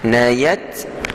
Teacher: ta yang kita sebut tu mesti dikeluarkan sedikit angin. Dalam tajwid kita panggil hamas.